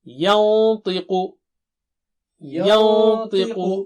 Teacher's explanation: نون ساکنہ بھی موٹا ہوگا کیونکہ تا کے پاس چھپا رہے ہیں